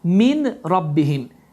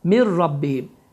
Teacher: Deməli, idğam biləğunnə qaydası baş verir ki, n səsi tamamilə oxunmur, ra hərfi isə şəddələnir və təcvid əhkamına görə, yəni idğam biləğunnə qaydasına görə bu iki sözün oxunuşu bu cürdür.